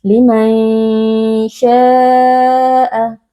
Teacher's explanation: Cara membacanya, kita membaca nun sukun dengan samar, bersiap-siap mengucapkan huruf shin, lalu kita baca dengan berdengung. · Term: ikhfa hakiki